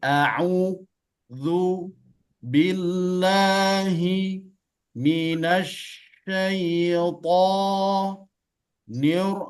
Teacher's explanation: Ro di situ huruf tebal. Kenapa? Karena di situ dia bertasydid atau berbaris atas.